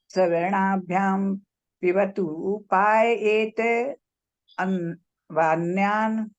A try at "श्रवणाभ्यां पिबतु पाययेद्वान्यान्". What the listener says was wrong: पाययेत द है ना, द आधा है, और व में आ की मात्रा है वा, और वा में अ और है अन्यान।